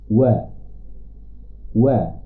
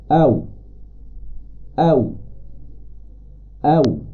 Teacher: Huruf yang pertama adalah waw dengan cara membulatkan dua bibir. Iaitu bila kita sebut, kita bulatkan bibir.